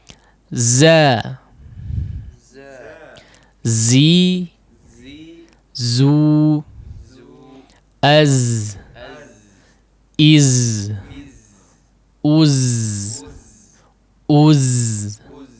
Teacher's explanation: ujung lidah yang ditempelkan kepada pangkal gigi seri bawah ya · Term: huruf zai